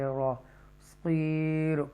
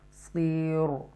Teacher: ان میں سے صاد ہے اور وہ زیر کے ساتھ ہے، تو یہ جو را ہے وہ را تخفیم کے ساتھ پڑھا جائے گا